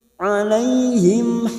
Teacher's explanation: mim sukun bertemu ha Idhar syafawi dibaca jelas tanpa mendengung